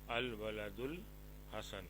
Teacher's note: اس وقت ال کا حمزہ، جسے حمزۃ الوصل کہتے ہیں، تلفظ میں گر جاتا ہے لیکن لکھنے میں الف کی صورت میں باقی رہتا ہے